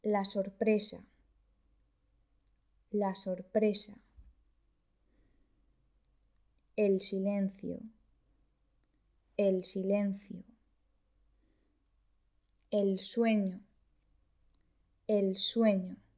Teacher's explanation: El fonema S es un sonido que existe en francés. Se trata de una S sorda.